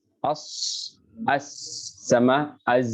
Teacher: Karena melewati ruang sempit pasti terjadi ketajaman dalam suaranya. Pasti kayak bersiul dia. Ya, karena ruangnya sempit. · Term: safir